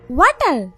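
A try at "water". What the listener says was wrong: ওয়াটার না, এটা ওয়াটার। ওয়াটার। জিহ্বার আগে সামনের দুই দাঁতের সাথে লাগবে। ওয়াটার ওয়াটার। তাই তো, ওয়াটার রে ওয়াডা বলতেই আছেন। এটা ওয়াটার।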